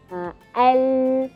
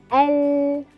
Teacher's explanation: Kita boleh rasa sisi lidah yang paling hujung ya. Sisi lidah paling hujung, kita pergi ke akhirnya yang menyentuh gusi depan atas. Keluar daripadanya huruf al-lam. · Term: huruf lam